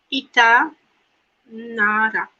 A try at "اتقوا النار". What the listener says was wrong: Why did you cancel the letter of Qaf? اتقوا اتقوا النار اتقوا النار.